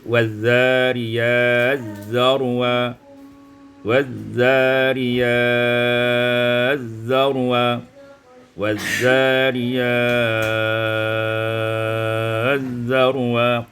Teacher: Ayat yang pertama, waz-zariyati zarwa, idghamut ta fi dzal, idghamkan ta pada zal menjadi waz-zariyaz zarwa